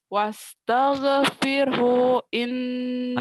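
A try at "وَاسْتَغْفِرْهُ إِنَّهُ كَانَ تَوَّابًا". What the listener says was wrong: Pendek. Wastaghfirhuin pendek. Wastaghfirhu innahu kana tawwaba.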